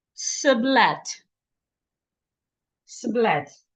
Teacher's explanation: the word is stressed on both syllables